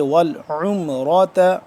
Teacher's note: عین کو حلق کے درمیانی حصے سے اور تھوڑا کھچاؤ پیدا کر کے کھینچ کے